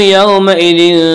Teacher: واولین وہ واو جو ساکن ہو اور اس سے پہلے زبر و واولین کو نرم آواز کے ساتھ پڑھیں گے